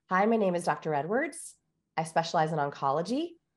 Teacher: the question inflection accidentally used on a statement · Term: uptalk